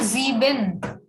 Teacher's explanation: S is again having Z sound.